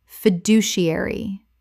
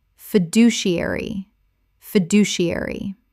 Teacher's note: six syllables with the stress on the second